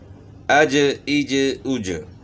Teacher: اب جیم ہے، تو جیم جو ہے زبان کا درمیان اوپر کے تالو سے جیم کو ادا کرنا ہوتا ہے، اج، تو جیم میں بھی قلقلہ ہوتا ہے، تو ساتھ ہم نے قلقلہ بھی کرنا ہے۔